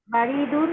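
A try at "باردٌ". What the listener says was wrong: বাতে টান আছে না, বারিদুন।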